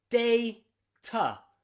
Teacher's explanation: many people pronounce it like that with an A and a T, a schwa sound at the end